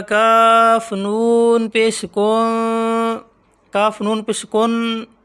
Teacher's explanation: اس نون پر بھی غنہ ہوگا، ہم ناک میں آواز نکالیں گے